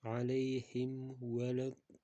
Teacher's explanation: Vavda aytganimizda sifat va maxraj chiqishi kerak, ya'ni lablar oldinga cho'zilgan holatda o'qilishi kerak. Alayhim valaddallin degan holatda o'qiymiz, ya'ni shu mimdan keyin fa va vav harfi kelsa shu qoidaga e'tibor berish kerak.